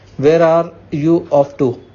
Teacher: Notice the falling intonation since this is an information question, not a yes no question.